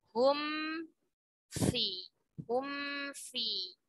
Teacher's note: ketika mim sukun bertemu fa, ya, idharkan, dibaca jelas mim sakinahnya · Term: izhar syafawi